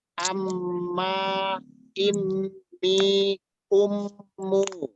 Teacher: kalau ada mim bertasdid nun bertasdid dibacanya ditahan 2 harokat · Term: Gunnah musaddadah